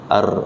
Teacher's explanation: Takrir itu kan mantul, bergetar. Ya, ketika antum mengucapkan R sesingkat itu, tapi kalau di slow motion itu lidah kita mantul-mantul